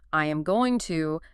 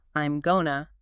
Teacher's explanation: The rigid phrase, I am going to, naturally melts and morphs into, I'm gonna.